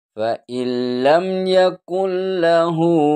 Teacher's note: non tidak dibaca langsung ke huruf lam